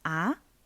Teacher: To do the second tone, the sound rising up very fast. It sounds like when you are asking something. Ah. But the second tone is not always used in the interro mood.